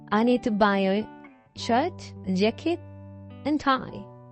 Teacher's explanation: 마지막에는 내리고 그 전에는 올리고 보통 이렇게 얘기를 많이 하죠